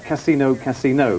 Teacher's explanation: the emphasis being on the final vowel there